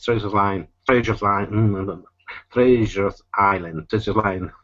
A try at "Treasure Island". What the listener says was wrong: Yeah, so you're adding an extra S here. You're saying Treasures Island. That's making it more challenging. It's Treasure Island. Okay, now give me a good TR instead of treasure, Treasure Island.